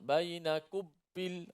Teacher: Bainakum bil mati mesti mim, suara mim tu dijalankan. Suara mim tu gunnah tu, dengung tu dipanjangkan. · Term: ikhfa syafawi